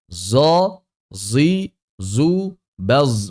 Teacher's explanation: Zo itu zai tebal atau sod jahar.